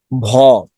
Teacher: ভ হলো ঘোষ মহাপ্রাণ ধ্বনি